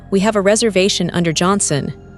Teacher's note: The rising tone at the end, Johnson asks it a question even though it's a statement.